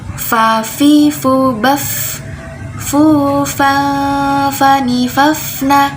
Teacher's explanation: Huruf fa makrojnya ada di ujung gigi atas bertemu dengan badan bibir bawah. Ujung gigi atas bertemu dengan bibir bawah, ini ya, fa.